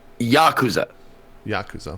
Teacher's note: I'm mostly joking, but the accent's on the first syllable